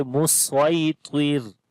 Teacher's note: This ta we read in heavy sound and ra we read in light sound, because when we stop, so ra comes with sukoon sign and there will be kasra before the ra.